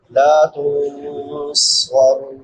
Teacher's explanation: صاد حروف مستعلیہ میں سے بھی ہے اور حروف صغیریہ میں سے بھی ہے، موٹا بھی کریں گے اور سیٹی کے ساتھ بھی پڑھیں گے